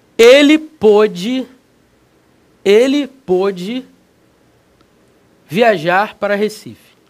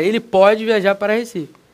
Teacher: pode timbre fechado pretérito ideia de passado pode timbre aberto ideia de presente